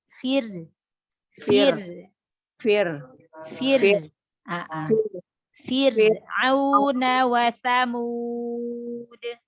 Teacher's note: Roknya ditipiskan. Rok sukun sebelumnya kasroh.